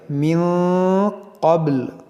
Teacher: یہاں پر دیکھیں تو بنا ہے، تو یہاں پر ہم رکیں گے، جب رکیں گے تو اس لام کو ساکن کر دیں گے، اور یہاں پر دیکھیں نون ساکن کے بعد قاف ہے تو یہاں پر اخفا کریں گے، اور یہ قاف حروف مستعلیہ اس کو موٹا کریں گے، اور با میں قلقلہ کریں گے